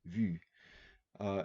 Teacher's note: And what U is, it's a vowel that's both front, the tongue is in the front of the oral cavity, but it's also rounded, the lips are rounded.